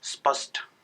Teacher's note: इन तीनों स का उच्चारण जो बिहार, यूपी और उत्तराखंड के जो हिंदी भाषी लोग हैं वो स ही करते हैं।